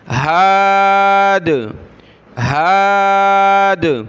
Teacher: جب رکیں گے تو دال پر قلقلہ ہوگا